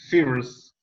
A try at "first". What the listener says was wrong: First. Like A, right? Instead of E.